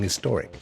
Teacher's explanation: we're used to dropping the H and saying historic, but that is correct.